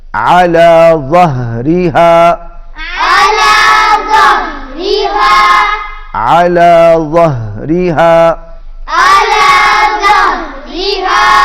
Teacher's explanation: یہاں پر دیکھ رہے ہیں کہ دو مرتبہ ہا آ رہا ہے، اور ہا کو اچھے طریقے سے ادا کریں، کیونکہ ہا حلق کے آخری حصے سے جو سینے کی طرف ہے وہاں سے ادا ہوتا ہے